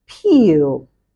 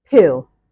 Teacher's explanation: apart from the fact that there's a difference in length there is also a slight difference in quality